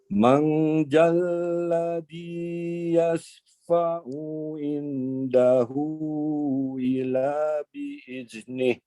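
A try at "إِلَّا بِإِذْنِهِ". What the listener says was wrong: Illanya ditekan. Illa Oke, zalnya izin Prof ditekan. Mohon maaf, di ujung lidahnya digigit ya. Illa bi'izni.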